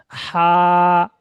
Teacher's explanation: হাটা উচ্চারণ হবে পুরো গলার মাঝখান দিয়ে, কণ্ঠনালীর মাঝখান দিয়ে উচ্চারণ হবে।